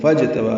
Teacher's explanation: فا کو اجتبا کی جیم سے ملا دیں گے. فاجتبا، جیم ساکن پہ قلقلہ ہے، با کو 2 حرکات لمبا کرنا ہے، کھڑا زبر ہے